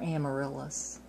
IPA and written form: ˌæməˈrɪlɪs (Amaryllis)